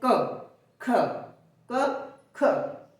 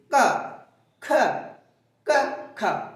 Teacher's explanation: कहां कहां जोर पड़ रहा है जीहवा के मूल भाग पर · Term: जीहवा मूली